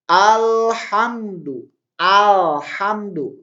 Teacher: Ini kan dibaca jelas ya alif lamnya. Ini berarti alif lam qamariyah. Karena dibaca jelas.